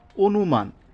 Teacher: এই চারটা বর্ণ সরাসরি অথবা এর যদি কার চিহ্ন থাকে তাহলে এই অটা বদলে গিয়ে ও এর মত হবে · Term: আদ্য অ